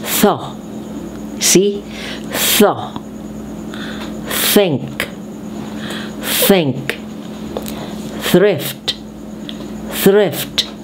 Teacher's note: This time we have the voiceless TH. When we say voiceless, we only have the breath. So you pronounce the TH with like a breath.